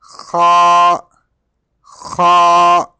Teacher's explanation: Kha is pronounced from the top part of the throat.